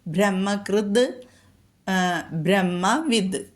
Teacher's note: ത് എന്നുള്ള അക്ഷരം നമ്മൾ ഖരം തായാണ്, അത് മാറിയിട്ടാണ് ശ്ലോകപാരായണം ചെയ്യുമ്പോൾ മൃദുവായ ദ ആയിട്ട് മാറുന്നുണ്ട്